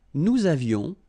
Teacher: little liaison, final S not pronounced.